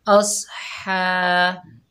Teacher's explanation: जज़म वाला हर्फ हमेशा एक मरतबा पढ़ा जाता है और स्वाद हुरूफ़ मुस्ताला में से है, मोटा अदा होगा। अस, हा के ऊपर खड़ा ज़बर है, बगैर खींचे पढ़ेंगे हा को हलक के दरमियान से अदा करें।